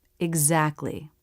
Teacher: Dropping the T between two consonants simplifies the pronunciation.